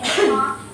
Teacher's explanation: So, it's aspirated in the initial position and in stressed syllable, and aspirated in some consonant combinations like as in talk.